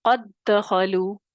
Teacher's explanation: اور پھر اس پہ جو قاعدہ عام طور پہ دال ساکن پہ کلکلا ہوتا ہے، کلکلے کے بغیر کیونکہ ادغام کے ساتھ ادا کیا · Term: ادغام صغیر